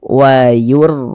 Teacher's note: Maka huruf ra-nya dibaca tafkhim, dibaca tebal, sehingga pangkalisan kita naik terangkat ke atas ketika kita mengucapkannya.